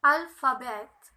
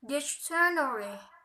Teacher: primary stress is on the first syllable and secondary stress is on the third syllable